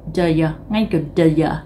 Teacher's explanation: Người ta không nói là do you mà người ta nói /də jə/